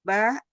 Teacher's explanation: ba asafatan dengan merapatkan dua bibir tanpa gunah.